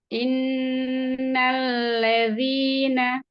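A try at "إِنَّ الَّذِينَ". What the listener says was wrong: Ya, hati-hati fathahnya nal buka fathahnya. Inna. Nah lebih baik ya jadi kalau fathah itu harus terbaca fathah jangan nal gitu innal kadangan tuh enggak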